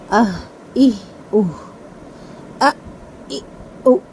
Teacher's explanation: حلق کا جو آخری والا حصہ ہے سینے کے قریب، وہاں سے ہا پڑھا جائے گا